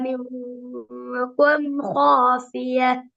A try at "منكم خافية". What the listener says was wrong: மின்கும் அல்ல, அந்த கேப் சிம்பிளா வரணும். மின்கும் நல்லா முன்னுக்கு வரணும். மின்கும் அதாவது நீ என்ன செய்றீங்கன்னா பின்னுக்கால வர ஹாவ வல்லினமாக உச்சரிக்கிறதுக்கு அந்த காஃப்ல இருந்து ரெடி ஆயிட்டீங்க. ஹாஃபிய என்று வர ஹா வல்லினம் தானே. அந்த ஹாவை நீங்க வல்லினமாக உச்சரிக்கிறதுக்கு மின்கும்ல கும் மிக்குதா சின்ன கேப், அதாவது அதுக்கு முன்னாடி உள்ளது. ஹாக்கு முன்னுக்கு வந்துக்குது அப்படித்தானே. அங்க நீங்க ரெடி ஆயிட்டீங்க, அதனால அந்த காஃப் வந்து பெரிய காஃபா வந்துட்டு. அந்தந்த எழுத்துக்கு முன்னுக்கு நீங்க ரெடி ஆகுறீங்க.